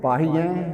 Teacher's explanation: ਇੱਕ ਤਾਂ ਆਹ ਯਾਰ ਥੋੜਾ ਇਹਨਾਂ ਨੂੰ ਕਹਿੰਦਾ ਬਹੁਵਚਨ ਹੋਣ ਦਾ ਕਰਕੇ ਆਪਾਂ ਇਹਨੂੰ ਪੜਾਂਗੇ ਪਾਹੀਏ, ਹਾਹੇ ਨੂੰ ਲੱਗੀ ਹੋਈ ਸਿਆਰੀ ਨੂੰ ਨਾਸਕੀ ਉਚਾਰਨ ਕਰ ਦਾਂਗੇ ਕਿਉਂਕਿ ਬਹੁਵਚਨ